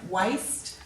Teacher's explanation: There's no air after the W, so we know there's no H after the W, it's just the W.